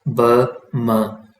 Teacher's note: तो जो लिप्स से जो साउंड प्रोड्यूस होते हैं उन्हें आमतौर पर लेबियल कहा जाता है। लेकिन कुछ जो साउंड्स हैं वो बाइलेबियल हैं, जिनमें अपर और लोअर लिप दोनों इन्वॉल्व होते हैं।